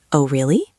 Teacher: It is all about the intonation. You must sound interested. Your voice should go up at the end.